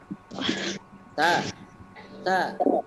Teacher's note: ada keluar nafas keluar desisan